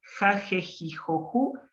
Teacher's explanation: es una jota que se hace adelante en el paladar